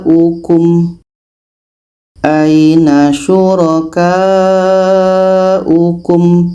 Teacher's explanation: ini satu kalimah ada tanda Mad bertemu Hamzah dalam satu kalimah ini mad wajib muttasil kita panjangkan sehingga 5 harakat